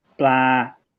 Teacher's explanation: Just make sure to hold the vowel sound for a moment, because like that ah in Thai it's a little bit longer than you want to say it. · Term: long ah vowel